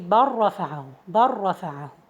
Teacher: So we merge the lam into the ra, and that's also an example for the closed letters, because the lam is close to the ra.